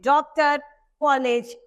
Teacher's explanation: ओ का उच्चारण आ और ओ के मध्य की ध्वनि से होता है